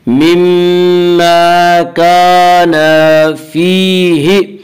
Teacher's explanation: مِمَّا كَانَ فِيهِ، فیہ یا مدہ وہ یا جو ساکن ہو اور اس سے پہلے زیر و یا مدہ کو ایک الف کے برابر کھینچ کر پڑھیں گے